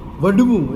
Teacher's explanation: ઢની જગ્યાએ હ અને ડ જોડાક્ષર, સંયુક્તાક્ષર આવે. હ અને ડ એ જોડી અને ઢને વિકલ્પે બોલે.